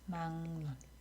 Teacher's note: 막논. 자, 그러고 나니까 앞에 있는 기역이 뒤에 있는 니은의 영향을 받아서 또 비음화가 되는 거죠 · 그래서 비음화가 2번 일어나는 발음이에요